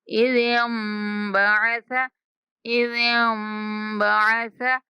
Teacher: ہم نے زال کو ڈائریکٹ میم کے ساتھ ملا دینا اور غننے کے ساتھ اس کی ادائیگی ہوگی۔